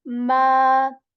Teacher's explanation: The ma sound here is for two counts.